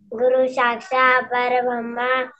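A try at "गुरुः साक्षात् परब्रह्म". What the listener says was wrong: Parabrahmaha. Okay, not Parabrahma. Parabrahmaha.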